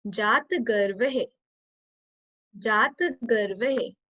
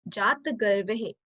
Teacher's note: We'll put very little pressure on T over here.